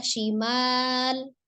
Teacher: Ada huruf shin sifatnya adalah tafasi ya. Jadi ditasdidkan kemudian dia suaranya nafasnya menyebar ya